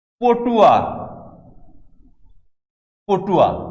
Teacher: পটুয়া পরে উ থাকার কারণে আগের অ ওতে রূপান্তরিত হয়ে গেছে। এটি সংবৃত অ উচ্চারণের একটি নিয়ম।